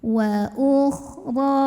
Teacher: Fi sabilillahi wa ukhra. Ra dibunyikan secara tafkhim karena barisnya fathah, maka bacanya tebal, pangkal lidah diangkat.